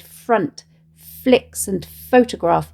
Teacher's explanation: The repeated fricative f sounds in the alliterated front flicks and photograph mimic the soft dry sound of paper being turned.